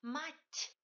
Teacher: Attention, dans le mot mать, t final est palatalisé. Il y a un signe mot à la fin de ce mot pour palataliser t.